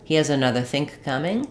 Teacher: I'm going to have a k from think. Because it is followed by coming, another think coming, I'm not necessarily going to say it with that break, think coming.